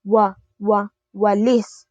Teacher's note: parang may madulas na tunog na wa hindi katulad ng matigas na katinig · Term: malapatinig